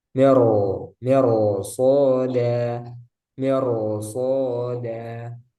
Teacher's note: Tapi karena ada huruf isti'lah setelahnya, maka dia dibaca tebal roknya. Jadi bukan mir soda tapi miro, miro soda, miro soda.